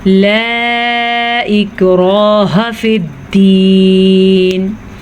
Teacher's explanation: मद 2.5 सेकंड तक खींच के पढ़ेंगे। इक्राह हमज़ा को नरमी से पढ़ेंगे क्योंकि ये हमज़ा है, आइन नहीं।